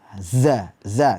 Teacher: ujung lidah berada di halaman gigi seri di halaman belakang gigi seri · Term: Zai